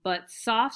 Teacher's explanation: and unstressed that's a that's that's one pair of iambic so we have the unstressed followed by the stress the unstressed followed by the stress